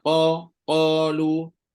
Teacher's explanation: Yang angin tu bukan huruf qaf. Yang huruf qaf ni tak ada angin. Dia solid. Bila kita sekat dia dekat pangkal lidah dan langit berdaging tu, langit lembut tu, memang dia tak akan keluar angin punya. Confirm takkan keluar.